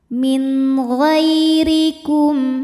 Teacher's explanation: huruf ra dibunyikan secara tarqiq sebab ra berharokat kasroh. Cara membacanya adalah dibaca dengan tipis.